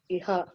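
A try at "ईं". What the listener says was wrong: I'm asking the dot, not Iha, Visarga, not Visarga. It will be im. If the vowel is A and Anuswara is there, then It is not because the vowel is A, Dirga. It's a long vowel. The long vowel with a dot.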